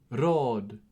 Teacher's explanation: Holthausen describes it as tip of the tongue, like in Italian, so I'm assuming he means what is called in linguistics a trill, a r sound.